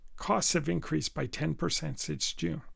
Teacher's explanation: I stress the words cost and increased and 10% because those were the words which I thought were most important. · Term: word stress